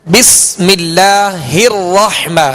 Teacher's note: بسم اللہ الرحمہ، یہاں را پر زبر ہے، را کو پر پڑھیں گے